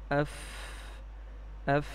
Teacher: دیکھیں، فا کے اندر صفت ہمس ہے، اس کی ادائیگی میں آواز مخرج میں ایسے ضعف کے ساتھ ٹھہر رہی ہے کہ سانس بند نہیں ہو رہی بلکہ سانس جاری ہے اور آواز میں ایک قسم کی پستی ہے